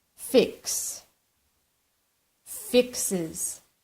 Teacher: the verb ends in s SH CH x z or o we pronounce the es ending with an additional syllable